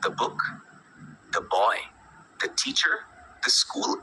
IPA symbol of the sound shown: ðə